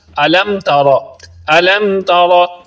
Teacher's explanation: میم ساکن ہے یعنی اس پر جزم ہے اور اس کے بعد حرف تا ہے تو اس پر غنہ نہیں کریں گے، یعنی اس طرح نہیں پڑھیں گے علم تارا، یہ غلط انداز ہے۔